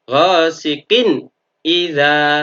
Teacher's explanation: Bacaan idhar harus dibaca secara jelas, artinya tanwinnya di sini kasrotennya atau nun sukunnya harus benar-benar dibaca n mati.